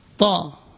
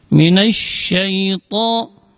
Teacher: Jadi posisi ujung lidah berada di usul sanaya, di pangkal gigi seri atas.